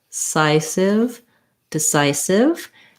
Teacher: again our first syllable is unstressed · second syllable stress on the psi syllable · second syllable stress on the sigh syllable. This time I'll write it like the word sigh, to make a sigh, sigh, because we again have this I diphthong.